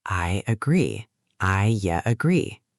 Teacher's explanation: Yes, a little j sound appears.